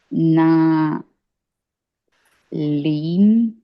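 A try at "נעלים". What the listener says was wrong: 3 syllables. Na'alayim. Na'alayim.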